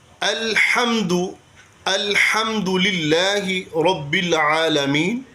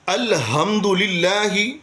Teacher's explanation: الحمد میں باریک ہا ہے، جو کہ وسط حلق سے ہم ادا کرتے ہیں۔ الحمد الحمد للہ رب العالمین، اور اس کو موٹے ہا کے ساتھ پڑھ دیتے ہیں۔